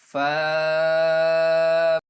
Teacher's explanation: جب یہ اوپر والے دانتوں کے کنارے نیچے والے ہونٹ کے تر حصے پر لگیں گے، گیلے حصے پر لگیں گے تو فا ادا ہوگا۔